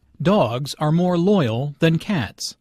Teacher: The nouns and the adjective are content words here, so they are all emphasized.